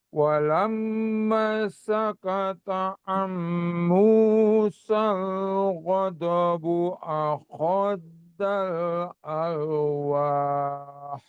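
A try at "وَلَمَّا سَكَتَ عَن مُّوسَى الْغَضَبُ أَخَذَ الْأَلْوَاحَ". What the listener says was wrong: Jadi maknya ini ya tadi agak kurang sedikit di maknya. Lamnya nahan, maknya juga Pak 2 harokat. Akhazal, hati-hati. Akhazal, zalnya itu zal ya hurufnya. Ahnya kayak ha tipis ya.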